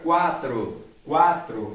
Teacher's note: Você percebe claramente que o som que sobressai é da letra A. Portanto, A, vogal, U, semivogal.